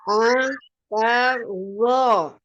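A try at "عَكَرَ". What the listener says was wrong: Ya, huruf ainnya dibuka lagi. Akalto.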